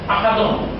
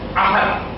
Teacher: এখানে দালের উপরে দুই পেশ আছে, আহাদুন, কিন্তু এখানে ওয়াকফ করতে হলে, অর্থাৎ এখানে তেলাওয়াত করে বিরতি করতে হলে এখানে দুই পেশের জায়গায় ধরে নিতে হবে সাকিন বা যজম